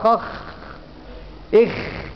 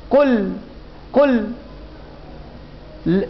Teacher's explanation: صوت اللام ما ينحبس كانحباس الشدة ولا يجري كجريان الرخاوة، يبقى ده التوسط.